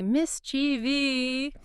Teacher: so many people add an entire extra syllable. They move the emphasis and say mischievi.